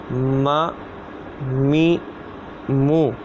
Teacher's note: میم جو ہے دونوں ہونٹوں کے خشک حصے سے ادا ہوتا ہے